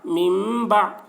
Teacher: یہ نون ساکن کے بعد با آ رہا ہے اس لیے نون کو میم سے بدل کر غنہ اور اخفا کے ساتھ پڑھیں گے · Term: اقلاب